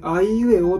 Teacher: あいうえおっていうふうに発音するときに、我々は息の流れをどこでも阻害していないんですね 。こういう特徴を持っているのが母音なんです。これが子音と母音の違いということになります。そして母音の特徴というのはもう一つあって、母音を発音するときっていうのは必ず声帯が振動するんですね。